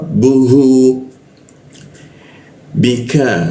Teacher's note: huruf hu di tenggorokan bagian bawah